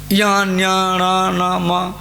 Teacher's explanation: ये अनुनासिका वर्ण है, ये नाक से उत्पत्ति होता है